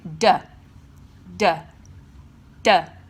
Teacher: I'm making sound with my voice and therefore it is a voiced consonant